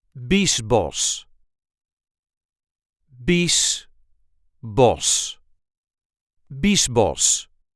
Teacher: In this case, the CH is just pronounced as an S.